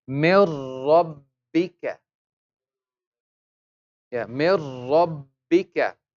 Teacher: We will join the meme with the ra without gunna. No sound to the nose. So the meme kasra, me. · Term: idgham without gunna